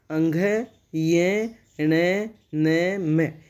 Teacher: इनका उच्चारण नासिका के साथ क्रमशः कंठ, तालु, मूर्धा, दांत और ओष्ठ के स्पर्श से होता है। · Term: नासिक्य व्यंजन